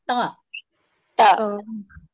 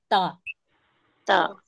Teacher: हाँ, ये जो जबान की नोक है तो ऊपर के सामने के दो दांतों की जड़ से अंदर की तरफ, अंदर की तरफ मुंह के अंदर जो ऊपर दांतों की जड़ होती है उससे जबान की नोक को टच करके निकालना है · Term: ता का मखरज